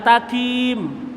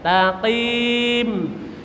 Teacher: Ka di luar, qaf agak dalam.